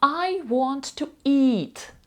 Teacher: довгий звук і чіткий переважно він під наголосом і він чітко вимовляється як і